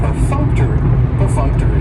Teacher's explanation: And perfunctory has 4 syllables, and the stress is on that second syllable, that funk, perfunctory. That third syllable has the schwa, and it's going to end with that long E sound.